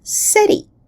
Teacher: In the word city, the T sound is pronounced very lightly. It's just a tap against the alveolar ridge, and the vocal cords don't even turn off, so to say, between the two vowels on both sides of the sound. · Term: a flap or a tap